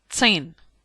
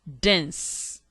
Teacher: T. Voiceless alveolar plosive. Tin. D. Voiced alveolar plosive. Dense.